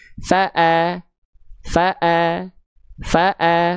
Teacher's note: Maka hamzanya dibaca harokatnya fathah, dibaca dengan vokal a karena harokatnya fathah, tipiskan pelafalannya